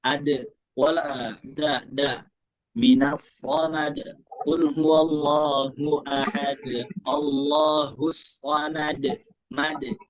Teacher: dal juga sama posisinya, yaitu ujung lidah dengan pangkal gigi seri atas.